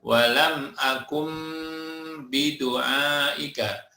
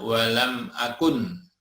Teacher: nun bertemu dengan ba, ya, dibaca berubah menjadi mim disertai samar, ya, dan dengung. Walam akum, maka bunyinya menjadi mim, ya. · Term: iklab